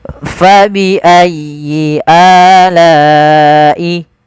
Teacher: ada la yang dipanjangkan karena dia bertemu dengan hamzah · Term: mad wajib muttasil